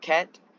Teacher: In the word cat, you pronounce the k sound at the end. The release of k sound is accompanied by a burst of air. This is another instance of aspiration.